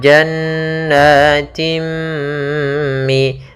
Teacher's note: Nah, kemudian pada lafal jannatim mi, yaitu adanya kasrotain, ya, kasrotain bertemu dengan huruf mim. Maka apabila ada kasrotain bertemu dengan mim, maka kita masukkan tanwinnya ke mim